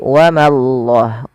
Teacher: bila didahului dengan fathah maka Allahnya tebal tapi Ma jangan ikut tebal jangan wamallah tapi wamallah Ma tipis Allahnya tebal wallahuilin Gin panjangkan